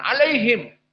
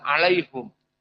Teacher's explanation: qiraah dari yaakub tidak membaca him dengan kasrah tapi Hum